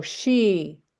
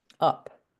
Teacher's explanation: she is a longer vowel than up